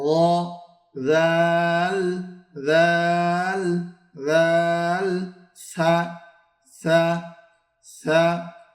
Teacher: জিহ্বার আগা সামনের উপরের 2 দাঁতের আগার সঙ্গে লাগাইয়া 3টি হরফ উচ্চারণ হয়। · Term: 13 নম্বর মাখরাজ